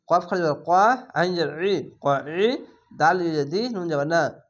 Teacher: আইনটিকে মোটা করে গলা চিপে পড়বেন